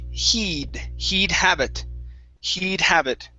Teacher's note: Instead of head, have it, this will be a long E sound.